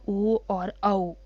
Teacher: कंठोष्ठ, कंठ और ओष्ठ, कंठ और ओष्ठ के थ्रू बनेगा कंठोष्ठ, यानी कि हमारे कंठ से आवाज़ निकलेगी और ओष्ठ में मूवमेंट होगी